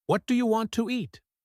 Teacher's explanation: In this question, the T in what is often dropped or changed to a stop, but the D in do connects to the Y in you. It sounds like what I want and want to becomes wanna.